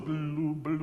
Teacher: can we put a little shadow vowel at the beginning of blue? Just a little blue, blue, Okay.